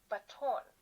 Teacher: the second syllable is our stress